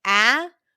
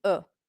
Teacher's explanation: take the vowel sound and you reduce it to a schwa instead of having an open vowel sound like ah we turn it into uh